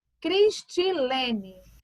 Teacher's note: o lê seria a minha sílaba tônica